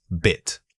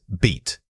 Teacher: Again, keep this sound short. The difference between it and eat is almost certainly the length of that middle sound. Focus on stopping the sound immediately after the vowel.